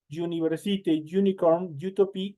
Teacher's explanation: esa vocal U en el momento de pronunciar es como que estuviera ahí una Y